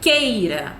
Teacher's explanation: Olha só como é que o E tá mais forte e o I tá mais fraquinho. Então, a gente tem uma vogal e uma semivogal. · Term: ditongo